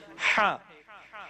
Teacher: middle part of the throat سے اگر ہم اس کو پروناؤنس کریں تو حرف ہا پروڈیوس ہوتا ہے